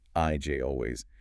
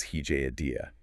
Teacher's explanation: The intrusive J sound, which sounds like Y, comes in after high front vowels, vowels that end with your tongue high and forward in your mouth, like IJ or a day.